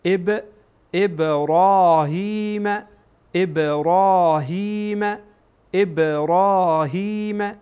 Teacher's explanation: این بای ابراهیم در اینجا قلقله میشه یعنی حرکت میکنه یک تکن تکان می‌خوره ابراهیم و اس و اس این حمزه